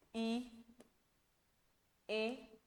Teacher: अग्र स्वर वे स्वर जिनके उच्चारण में जीभ का जो टिप वाला हिस्सा है ना, अग्र वाला भाग है, वो कार्य करता है।